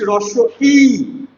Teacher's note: আমি যখন এর রসই ধ্বনিটা উচ্চারণ করছি রস ই অর্থাৎ আমার ঠোটটা এমন চ্যাপটা থাকছে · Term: প্রস্থিত ধ্বনি